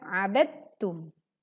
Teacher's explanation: Karena huruf dal dan huruf ta itu dalam satu makhraj, maka langsung dileburkan ke huruf yang kedua yaitu ta. Saat kita membaca ba langsung dileburkan ke huruf ta.